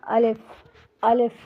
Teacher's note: الف جو کہ منہ کے خالی حصے سے ادا ہوتا ہے